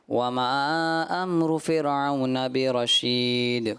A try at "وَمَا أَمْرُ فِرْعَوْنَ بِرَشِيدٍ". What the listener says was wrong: ماشاءاللہ عبد الرحمن بھائی نے آیت پڑھی، ایک تو انہوں نے جو ہے وما یہاں مد جو ہے دوسری چھوڑ دی، تو اس وجہ سے تو آپ کو دیے جاتے ہیں 50 میں سے 46 نمبر۔